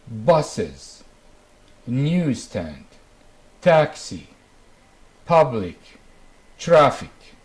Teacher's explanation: The first group is stress, unstress. The stress is on the first syllable. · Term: syllable stress